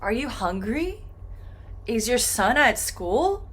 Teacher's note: for these yes and no questions, this final sound, this final syllable is going to go up